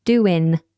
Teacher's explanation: the NG, which is normally formed with the back of the tongue high, becomes in with the front of the tongue high to make a N sound.